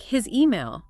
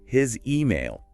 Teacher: His ends with a Z sound, even though it's spelled with S. And email starts with a vowel, so it's naturally for that Z to link across.